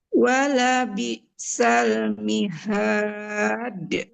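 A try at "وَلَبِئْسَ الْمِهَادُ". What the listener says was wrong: Nah, kolkolahnya jangan mihad. Nggak boleh ditahan ya. Harus memantul langsung. Wala bi'sal mihad. Nah, nggak ditahan dulu ya.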